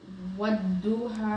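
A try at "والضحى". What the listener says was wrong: Not what, see that you said a dal, it's not what duha. Wal duha, bad. Wal duha, and you have to feel the air in your mouth. Okay, so this is the bad. Bad. Wal duha.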